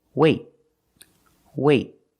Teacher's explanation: you put your tongue up in the T position but you don't release. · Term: stop T